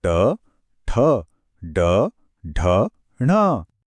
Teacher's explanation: इसमें जीभ पीछे की तरफ मुड़कर तालू को छूती है, जिससे ट और ड जैसी आवाजें निकलती हैं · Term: मूर्धन्य